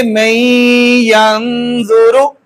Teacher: پہلے ادغام معال غنہ ہوا اور آگے نون ساکن پر اخفا ہو رہا ہے. تو ہم اس کو پڑھیں گے من ینظر.